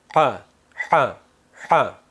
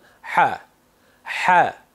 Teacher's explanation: U hada yengil qirilish bor, yengil tomoq qirishni eslatadi bu undoshning talaffuzi. Va mana shu sirg'alish, mana shu shovqin natijasida ha undoshi hosil bo'ladi va eshitiladi.